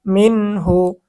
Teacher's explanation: নুন সাকিন নুন সাকিনের পরে ইজার হরফ হ আসছে স্পষ্ট করে গুন্না ছাড়া পড়তে হবে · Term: ইজহার